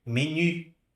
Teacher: Mas em francês eu vou falar menu, com aquele biquinho no u